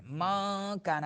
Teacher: نون ساکن کے بعد حروف اخفا میں سے کاف آ رہا ہے تو نون کو چھپا گیا